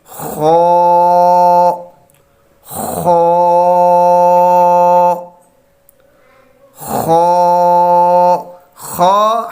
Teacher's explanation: خو حلق کے اوپر والے حصے سے ادا ہوتا ہے، جیسے ہا حلق کے درمیان والے حصے سے ادا ہوا، اب یہ خو جو ہے یہ حلق کے اوپر والے حصے سے ادا ہوتا ہے، اور یہ خو جو ہے یہ حروف مستعلیہ میں سے ہے۔